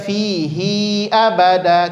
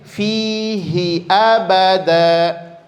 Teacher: satu baik sebelum ataupun sesudahnya dia huruf yang sukun atau mati maka dia tidak lagi menjadi Mad Silah dan tidak dibaca panjang